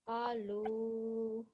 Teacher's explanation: Alu needs to be prolonged for 2 seconds. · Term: madda